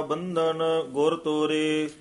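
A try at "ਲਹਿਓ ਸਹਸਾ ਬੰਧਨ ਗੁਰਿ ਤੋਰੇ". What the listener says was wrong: लहयो सहसा इथे थोड़ा जा ठहरा दे देना, बंधन इथे भी ठहरा दे देना। गुर तोरे, बंधन गुर भी नहीं कहना, सहसा बंधन भी नहीं कहना, यानी स्पष्ट जा करके इस पंक्ति नु उच्चारण करना। लहयो सहसा बंधन गुर तोरे,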